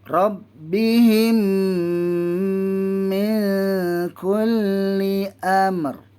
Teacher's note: Rabbihim, dengung tu yang 2 harakat.